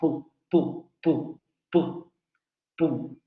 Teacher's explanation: El momento explosivo, vamos a decirlo así, se genera entre los dos labios · Los dos labios son los que van a generar el bloqueo y luego van a liberar abruptamente el aire y no va a haber vibración de cuerdas vocales. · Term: Oclusivo, bilabial sordo